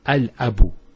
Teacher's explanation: you see how the lam has the sukoon and it's pronounced in all cases. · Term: moon letters